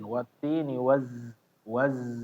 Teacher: dialirkan suara ya, Bapak, bukan nafas ya. Ada suara yang mengikuti setelahnya wazzai, waz, bukan ditahan tapi ya, cuma dialirkan aja.